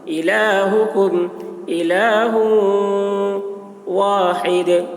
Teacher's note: دال میں قلقلہ، کیونکہ یہاں پر وقف کر رہے ہیں تو دال ساکن ہو جا رہا ہے تو قلقلہ ہوگا